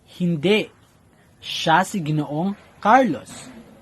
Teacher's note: ang antala o hinto ay magaganap pagkatapos ng salitang hindi at pagkatapos ng salitang Carlos. Kaya, ang pagkabigkas nito ay hindi siya si Ginoong Carlos.